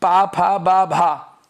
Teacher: इनका उच्चारण करते समय दोस्तों हम लोगों को दोनों ओंठों को मिलाना पड़ता है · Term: ओष्ठ वर्ग